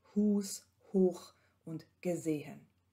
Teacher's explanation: Im Wort- und Silbenanlaut ist das H ein behauchter Laut.